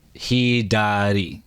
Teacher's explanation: it's almost like a D because you're saying it fast